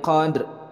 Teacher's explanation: dal disukunkan adalah merupakan qalqalah. Ini karena huruf dal berada di tengah kalimat, maka ini menjadi qalqalah sughra.